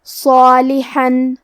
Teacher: حرف الحاء کی ادائیگی حلق کے درمیان والے حصے سے ہے · کلمت صالحن میں حرف الصاد حروف التفخیم میں سے ہے، تو ہم صاد کو بھاری آواز میں پڑھیں گے، اور کیونکہ اس کے بعد مد الف ہے تو ہمیں مد الف کو بھی تفخیم سے پڑھنا ہے۔